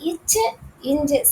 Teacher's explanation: நாவின் இடை அண்ணத்தின் இடை ரெண்டுமே இடையில நாவோட இடையிலயும் அன்னத்தோட இடையிலும் தோன்றுது.